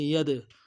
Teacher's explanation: دال قلقلہ ہے، قلقلہ کریں گے